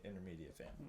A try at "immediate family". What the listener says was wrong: You say intermediate family? It sounded like you said intermediate family.